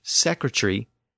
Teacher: many dialects in the UK have shortened or slurred this suffix over the past couple of centuries, from airy to just re. So secretary became secretary.